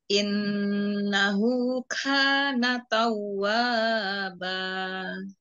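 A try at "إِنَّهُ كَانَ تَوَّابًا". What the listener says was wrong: Ya, wa-nya cukup 2 harakat saja. Innahu kana tawwaba. Jangan innahu kana tawwaba. Bukan. Tapi 2 harakat saja. Innahu kana tawwaba. Innahu kana tawwaba.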